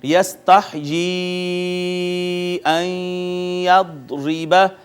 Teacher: اس کو مد منفصل کہیں گے، اس کو 3 الف جتنا کھینچتے ہیں